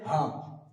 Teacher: বুকের ভেতর থেকে গভীর একটা গম্ভীর একটা বাতাস বের হবে। বেরিয়ে উচ্চারিত হবে হা।